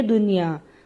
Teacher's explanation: اب نون ساکن کے بعد یا حروف ادغام اسی کلمہ میں ہے، ایک ہی لفظ ہے یہ، تو ادغام نہیں ہوگا، صاف پڑھیں گے